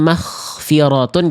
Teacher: Karena ghoinnya nafasnya keluar, bocor, berhembus, jadi langsung dia bertransformasi menjadi huruf kho sukun. Karena kho dan ghoin hanya berbeda dari segi udara dan nafas yang mengalir.